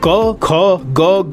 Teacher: ये वो ध्वनियां हैं जिसको बोलते समय हमारे कंठ का यूज होता है